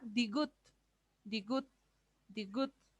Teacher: Una D al principio, al medio una D, pero cuando está al final suena como una T.